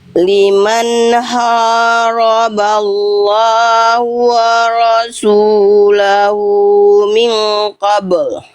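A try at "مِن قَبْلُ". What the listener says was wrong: Tahan dulu ikhfanya. Nun sukun ketemu huruf qaf ikhfa. Tahan dulu 2 harokat. Kesalahan Bunda nggak ditahan. Min qabl.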